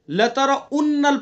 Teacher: لترونل یعنی واو کی جگہ حمزہ پڑھ دیتے ہیں.